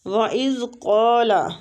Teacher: ہونٹوں کو گول کریں گے، قاف مستعلیہ حروف ہے، پور پڑیں گے اور کھینچیں گے بھی ، الف مد ہو رہی ہے، منہ سا دونوں کو قائم